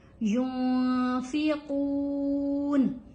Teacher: یہاں نون کے اوپر ہم نے اخفا کیا ہے کیونکہ نون ساکن ہے اور اس کے بعد فا ہے. جب نون ساکن کے بعد کچھ حروف ہیں وہ آ جائیں، ان میں سے ایک فا بھی ہے.